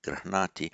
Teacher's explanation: So that's why you have not, it would, if it were without some prasarana, would be grahnati, Of course, with the subdotted N, because the preceding R and the H does not block the retroflexing of it, so grihnati.